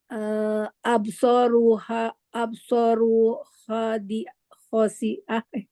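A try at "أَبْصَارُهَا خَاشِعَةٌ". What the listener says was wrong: Absoruha Jangan pakai wa. Absoruha khosyiah.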